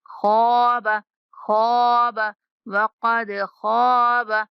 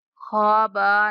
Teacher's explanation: خا کے بعد الف مدہ ہے تو خا کو موٹا پڑھتے ہوئے کھینچنا ہے۔ خواب، خواب، وقد خواب، خوابا نہیں پڑھنا، با کو کھینچنا نہیں ہے۔